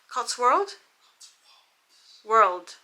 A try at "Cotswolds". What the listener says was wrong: No, Wolds. it's an S on the end. It's an S on the end.